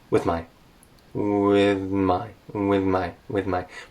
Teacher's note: my tongue is just barely coming out between my teeth